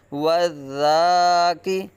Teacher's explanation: زال نرمی سے پڑھا جائے گا، سختی نہیں کریں گے، یہاں سیٹی نہیں بجنی چاہیے